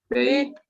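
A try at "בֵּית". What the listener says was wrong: Bet. Bet. Aquí no se lee beit, sino bet.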